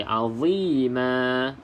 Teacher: Cuma kenapa dia bunyi tebal? Kerana pangkal lidah ketika menyebut huruf za terangkat.